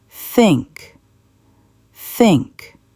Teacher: She sticks her tongue out between her teeth. She blows air.